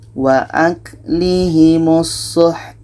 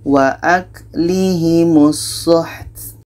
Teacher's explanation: Ta ini hamas, ada anginnya.